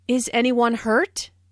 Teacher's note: this is a yes no question so the intonation Rises at the end